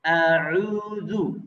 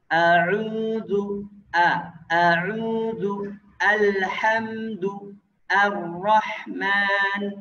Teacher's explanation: makhraj hamzah ya yang keluar dari pangkal tenggorokan